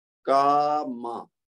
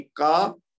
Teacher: کیونکہ میم کے اوپر صرف زبر ہے اس کے ساتھ اور کچھ نہیں ہے، کاف کے بعد زبر کے ساتھ ساتھ الف بھی ہے تو وہ الف ماد ہے، تو دو حرکت تک اس کو کھینچیں گے